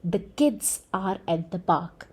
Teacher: the words that will be stressed in this particular sentence will be kids and park. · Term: content word